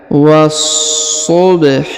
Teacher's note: Was-subhi. Perhatikan huruf wa langsung disambung masuk ke huruf so yang berharokat tasdid ya. Ditahan dan ditekan.